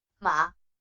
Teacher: the second tone has a rising tone